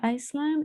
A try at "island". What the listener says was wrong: be careful with the pronunciation of the word island s the s is not pronounced so island if you say iceland it's possible but it's a different word